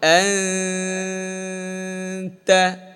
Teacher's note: তায়ের মাখরাজের ওইদিকে চলে যাবে। জিহ্বার আগা সামনের ওপরে দুই দাঁতের আগায় চলে যাবে। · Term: গুন্না